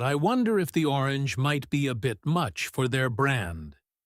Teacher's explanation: Try to notice how your voice naturally softens on the second half of the sentence.